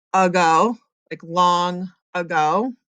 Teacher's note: if there is an open syllable A at the beginning, like in the word ago, like long ago, it usually changes to a schwa sound